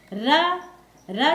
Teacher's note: र जो है लुंठित इसलिए कहा जाता है कि र बोलते वक्त हमारी जिह्वा बेलन के समान मुड़ जाती है, और बोलने में बेलन के समान मुड़ने की वजह से इसे लुंठित कहा जाता है।